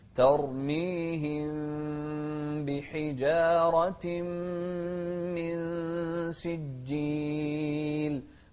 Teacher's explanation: الميم الساكنة هنا بعدها باء هنا الحكم إخفاء